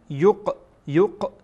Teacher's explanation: قاف در اینجا ساکن هست و قاف از حروف قلقله هست، تکان میدیم، یعنی قلقله خودش به معنای تکان دادن و این را در اینجا حرف را حرف قاف را در اینجا تکان میدین چرا که ساکن هست.